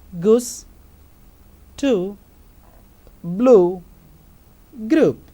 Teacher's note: Next pure vowel is oo. Back of the tongue is raised. Rounded vowel, because lips are closely rounded in the production of the sound.